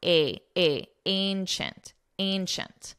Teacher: The Colosseum is the largest ancient, notice the pronunciation, ancient, ch-chint, ancient, ancient. And it's a very nasal A sound